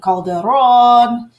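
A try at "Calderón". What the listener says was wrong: No. You can roll your R's a little more. It's Calderon. Calderon, yes.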